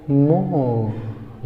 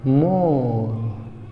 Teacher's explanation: यहाँ जब हम ब्रिटिश इंग्लिश पढ़ रहे हैं ना, तो वहाँ अगर लास्ट में आर या RE आता है तो रा का साउंड आप नहीं निकालते हैं। यहाँ आर साइलेंट होता है, क्या पढ़ेंगे?